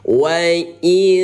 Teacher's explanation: Cara membaca ikhfa yaitu dengan cara ya mensamarkan bunyi nun yang baris mati selama 2 ketukan.